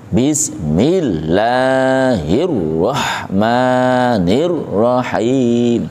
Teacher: Perhatikan tasydidnya ada 3. Di atasnya huruf lam Allah, di atasnya ra ar-rahman, di atasnya ra ar-rahim. 3 itu ditekan tapi tanpa dengung.